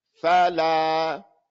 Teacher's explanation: So this la is going to be double that fa, double the time. You're not going to say fala, fa, fa, fa. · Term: two harakas